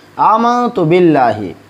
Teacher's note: آمنت باللہ، اس باللہ لفظ اللہ کو، یہاں پہ لفظ اللہ کو باریک پڑھیں گے کیونکہ یہاں پہ با سے نیچے زیر ہے